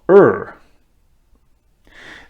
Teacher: the r produced with the tip of the tongue pointing backwards